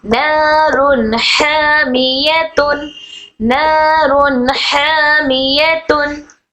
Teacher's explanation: नून की आवाज को जाहिर करना है ना कि नाक में छुपाएंगे ना ही गुना करेंगे। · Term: इज़हार